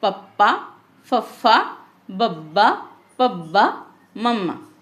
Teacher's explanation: ਇਹਨਾਂ ਦੇ ਉਚਾਰਨ ਸਮੇਂ ਬੁੱਲ ਆਪਸ ਵਿੱਚ ਛੂੰਦੇ ਹਨ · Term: ਹੋਂਠੀ